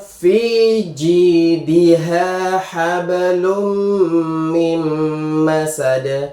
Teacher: Ini nun sukunnya juga tidak dibaca tapi langsung masuk ke mimnya. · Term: idgham bigunah